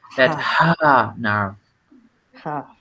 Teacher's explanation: usualmente a la H la asociamos con la J en español y está mal. Es un sonido, es como respirar.